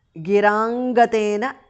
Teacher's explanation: द्रुह्यन् पयोजन्मने माधुर्येण धास् महाप्रणः गिरां gateන गिराङ्गतेन because of sandhi anuswara changes to nga